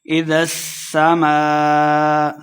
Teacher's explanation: الف مدہ اور اس کے اوپر مد ہے، تو ہم نے اس کو خوب لمبا کر کے پڑھنا ہے · سین پہ سیٹی کی آواز آئے گی